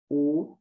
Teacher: como veis, la lengua se va hacia atrás